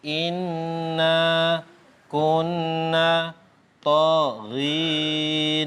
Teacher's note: mim dan Nun yang bertasydid itu wajib dibaca dengung dan dengungnya itu adalah satu Alif atau dua harokat dua ketukan